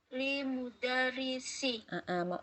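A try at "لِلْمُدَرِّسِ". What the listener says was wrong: Ada alif lam. Lamnya dibaca dengan jelas lil seperti Lil mudarrisi. Lil mudarrisi.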